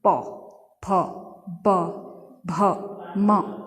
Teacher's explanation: जब बोलते हैं तो हमारे ओष्ठ क्या होते हैं, आपस में टकराते हैं। प फ ब भ म, तो ये कहाँ से स्पर्श हो रहा है, हमारा ओष्ठ से अर्थात होंठों से, ठीक है।